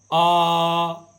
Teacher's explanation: एक बीव्रत, इसका मतलब है जिसमें मुख द्वार पूरा खुले, जैसे देखिए मुंह पूरा खुले जिसमें, उसे बीव्रत कहते हैं। आ, तो बड़ा आ का साउंड जब हम करते हैं तो मुख द्वार हमारा पूरा खुलता है